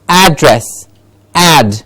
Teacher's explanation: so address with the stress on ad